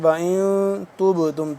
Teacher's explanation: نون یہاں پہ ہم کریں گے اخفا کریں گے کیونکہ نون ساکن ہے وَإِن تُبْتُمْ تا با پیش تب با یہاں پہ ساکن ہے